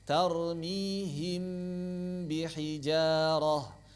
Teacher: ikhfa pada mim itu caranya adalah dengan merapatkan bibir secara lunak, dialirkan 2 harokat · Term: ikhfa syafawi